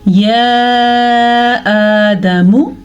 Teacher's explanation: اب یا کی مقدار میں نے لمبی پڑھی کیونکہ اس کے اوپر مد ہے